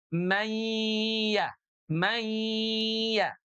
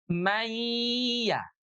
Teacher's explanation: Sambil gunnah ditahan 2 ketuk, keluar suaranya dari rongga hidung.